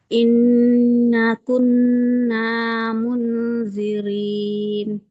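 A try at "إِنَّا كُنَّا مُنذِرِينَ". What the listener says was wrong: Inna kun sama. Nah, yang pertama dengan na yang kedua sama panjangnya. Inna kunna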